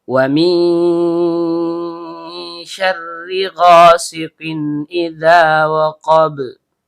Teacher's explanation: Nun ujung lidah bertemu langit-langit bagian tengah. Karena nunnya sukun bertemu dengan syin yang keluar dari tengah lidah naik memantul ke langit-langit. Maka di sini terjadi hukum bacaan ikhfa hakiki. Artinya disamarkan disertai dengung.